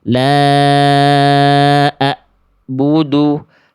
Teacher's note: Salah tadi itu kesalahannya besar bukan hanya sekedar terputus. Kesalahannya tadi ainnya berubah jadi hamzah bukan hanya sekedar terputus ya. Makanya bacaan yang barusan salah ainnya ya karena berubah jadi hamzah betul-betul terputus.